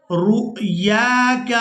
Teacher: را کو حمزہ ساکن کے ساتھ ملانا ہے تو جھٹکے کے ساتھ ادا کرنا ہے